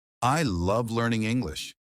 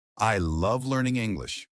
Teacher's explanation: if you add some natural intonation like I love learning English with emphasis on love it sounds way more natural